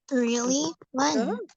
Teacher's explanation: Yes, when-nya intonasinya turun.